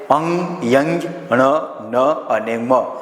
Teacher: અણ ન અને મ માટે તેને અનુનાસિક વ્યંજન કહેવામાં આવે છે આ પ્રકારના વ્યંજનનો ઉચ્ચાર કરતાં નાસિકામાં મારફતે ગરમ વાયુ બહાર નીકળે છે